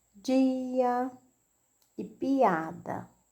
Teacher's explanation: as vogais, elas ficam sozinhas, cada uma em uma sílaba separada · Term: hiato